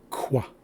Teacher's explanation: This is a rounded K. It sounds like qua.